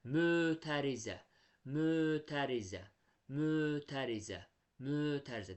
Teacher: Qulaq asanda fikir verirəm ki, ö saiti uzanır. Deməli, burada mötərizə sözündə ö saiti uzandığını fikir verirəm.